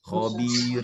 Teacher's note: Yang terakhir itu setipis-tipis mungkin karena dia didahului oleh kasron